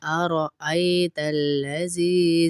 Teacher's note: زی کو اس لیے کھینچ رہے یائے مدہ ہے